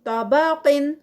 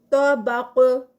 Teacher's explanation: تو طباقن یہاں پر صرف طا ہیوی قاف ہیوی ہوگا لیکن اس پر قلقلہ نہیں ہوگا، لیکن جب ہم اس کو سٹاپ کریں گے طبق، تو پھر اس پر اینڈ پہ آواز پلٹے گی قاف پہ، تو اس کا قلقلہ ادا ہوگا